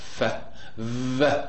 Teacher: the two labiodental sounds are f and v. F is voiceless · the lower lip articulates against the upper teeth, not the upper lip. If it articulates with the upper lip, so it will be bilabial.